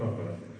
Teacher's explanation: O vurğu birinci hecəyə düşür.